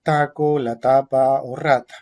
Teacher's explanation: la punta de la lengua se pone detrás de los dientes, se articula con modo oclusivo y sin vibración de cuerdas vocales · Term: postdental oclusiva áfona